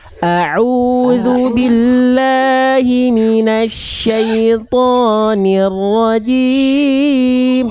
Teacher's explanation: tinggal di huruf ainnya kuatkan. Au dari tengah tenggorokan Bunda.